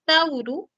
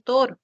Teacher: en el español por ejemplo la secuencia Au el diptongo Au el diptongo Au pasó a ser el monoptongo o en el español · El diptongo AU pasó a ser el monoptongo O en el español. La palabra tauru pasó a ser toro. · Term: monoptongación